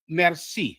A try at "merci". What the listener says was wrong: Merci. Say it without the R. So in French, it will be merci. In Creole, it's merci.